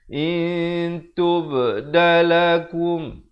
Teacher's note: Di sini samarkan, asalnya in, tapi bila datang ta jadi in. Nak kata nun pun tidak, ta pun tidak, dengan kadar 2 harakat. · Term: Ikhfa hakiki